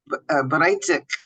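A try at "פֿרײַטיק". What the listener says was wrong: So the first letter is a fe, so it's Freitag. You see, Freitag, Friday.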